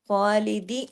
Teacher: خا کے اوپر کھڑی زبر ہے تو وہ الف کے برابر کھینچے گا، لام کے نیچے زیر ہے وہ صرف ایک حرکت پڑا جائے گا، 2 حرکات نہیں پڑا جائے گا۔